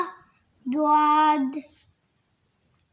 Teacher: জিহ্বার গলার কিনারা উপরের মাড়ি দাঁতের গলার সঙ্গে লাগাইয়া দোয়াদ